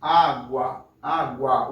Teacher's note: o som do A sai um pouco mais forte que o som do U. Água, água, o A sai um pouco mais forte, né? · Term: vogal